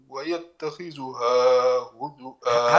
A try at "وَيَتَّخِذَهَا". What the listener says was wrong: هذه قراءه اخرى. ويتخذها روايه حفص بالفتح. لا ويتخذها ذا